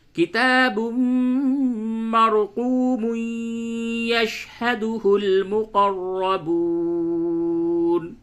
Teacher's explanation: تو یوں پڑھیں گے، ادغام کے ساتھ پڑھیں گے، تنوین کے بعد یا ہے، ادغام مع الغنہ ہوگا